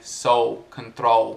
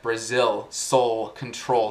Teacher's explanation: eu tô notando um pouco de um sotaque nas palavras soul e control, sem esse L no fim, né?